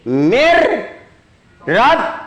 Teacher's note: Jadi bacanya bukan min, tapi masukin 1, 2, 3. Asalnya bacaannya min rabbihim, tapi karena kemasukan huruf ro, nun ketemu dengan huruf ke ro itu idgham bilaguna, maka masukin ya.